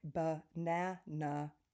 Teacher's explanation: If you take a word like banana, it has schwa, flat A, and then schwa.